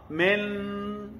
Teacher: Lidah saya pergi menempel ke gusi. Itu izhar.